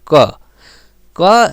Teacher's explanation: जैसे पहला अक्षर है क, तो क बोले में ज़्यादा टाइम नहीं लागी, क बोल के देखो क जब बोलब तो ये बहुत कम प्राण इकर में है, बहुत कम जान इकर में है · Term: अल्प प्राण